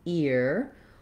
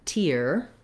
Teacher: The main stress in deteriorate is on the tier syllable. And even though we have the letters ER here, we have the ear diphthong. You can think about it like the word ear or the word tear.